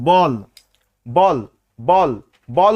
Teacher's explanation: উচ্চারণ করতে গেলে কিন্তু দুই ঠোঁট মিলিত হওয়া লাগছে